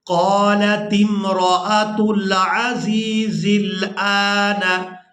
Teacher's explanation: یہاں حمزہ کو کھڑی زبر کی وجہ سے کھینچ کر ادا کرنا ہے. حمزہ کھڑی زبر آ، نون زبر نہ، آن.